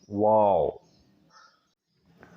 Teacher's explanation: واو غیر مدہ کہلاتا ہے، دونوں ہونٹوں کو گول کر کے ناتمام بند کرنے سے ادا ہوتا ہے